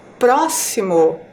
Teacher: ao falar a palavra próximo a sílaba mais forte é a sílaba pro e ela está ali na antepenúltima sílaba